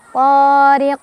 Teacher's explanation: ri dibaca secara tarqiq karena ada ra berbaris kasrah ditipiskan.